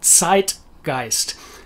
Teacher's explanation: the german zed has its very own particular sound which is like pronouncing a t s but at the front of a word